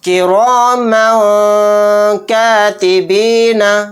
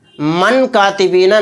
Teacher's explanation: تو من کی آواز کو ہمیں ناک میں چھپانا ہے، کراما کاتبین، اور من کہتے ہوئے جو ہم اس میں اخفا کر رہے ہیں ماں، تو وہاں پر زبان بھی ہماری کہیں پر ٹچ نہیں کرنی ہے، کراما کاتبین۔